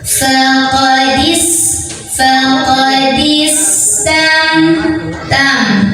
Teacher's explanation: Ini sin ada sifat yang tidak memiliki lawannya, namanya sifat sofir, ada desis kayak ular ya.